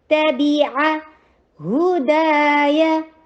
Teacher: ہا کے پر ضمہ، ہونٹوں کو گول